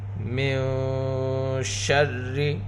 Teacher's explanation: نون ساکن میں اخفاء حقیقی ہوگا، نون ساکن کے بعد حروف اخفاء میں سے شین ہے۔